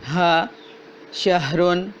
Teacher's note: ہا نرمی کے ساتھ جیسے کہ ہائے ادا ہوتی ہے، یعنی کہ اقصی حلق سے